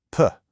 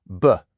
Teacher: The P sound gets a little puff of air, but the B sound doesn't.